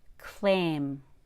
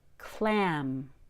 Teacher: for long a remember the tip of the tongue is just below the bottom teeth but short a has a much lower tongue the tongue is all the way at the bottom of the